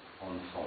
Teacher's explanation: Ici, l'accent sur la première syllabe, ici on a ce que les phonéticiens appellent un E central, lequel n'est jamais accentué, anfus, et ici l'accent va être sur la deuxième syllabe